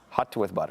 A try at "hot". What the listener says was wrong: It's H-O-T, not H-U-T. It's not a hut. Hot. That's how you say it.